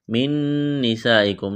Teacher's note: یہاں پر آواز ناک میں چھپائیں گے، غنہ کریں گے